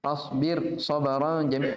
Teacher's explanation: Roknya tipis. Walaupun setelahnya tebal. Tapi dalam 2 kata.